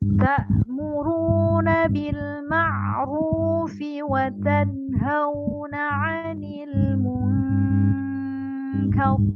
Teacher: Ada kaf, suara kaf di sana. Di huruf nun itu ada suara kaf.